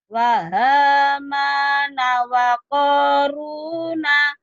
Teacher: ma-nya panjang, ko-nya panjang, ru-nya panjang